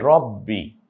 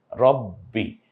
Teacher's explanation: তাহলে বটা দুইবার উচ্চারিত হলো